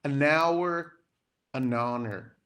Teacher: o H, ele é silent, a gente não pronuncia